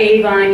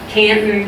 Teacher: a whole bunch of examples where the accent is on that first syllable